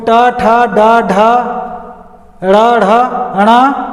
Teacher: अब देखिए मूर्धन्य वर्ण, यानी मूर्धा वाले वर्ण। जहाँ जीभ जब मूर्धा में टकराकर स्पर्श करके ध्वनि का उच्चारण करती है तो वैसे वर्णों को मूर्धन्य वर्ण कहते हैं।